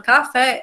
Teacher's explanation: a sílaba fé é a sílaba mais forte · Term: sílaba tônica